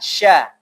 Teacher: Dia mempunyai sifat tafashi. Tafashi itu menyebar.